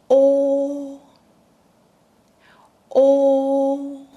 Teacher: Lips naturally round. Tongue pulls back with the back part rising.